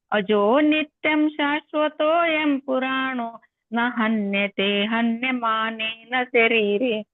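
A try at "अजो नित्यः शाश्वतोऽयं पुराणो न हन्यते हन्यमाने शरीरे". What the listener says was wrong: ಅಲ್ಲಿ ನಿತ್ಯ ಇಲ್ಲ ಮೂರನೇ ಮಾತಿಗೆ ನಿತ್ ಅನ್ಬೇಕು ಆಮೇಲೆ ಮಾನೇ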